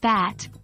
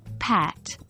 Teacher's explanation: Do you feel the vibration for B, but not for P? Remember, the B is voiced and the P is voiceless.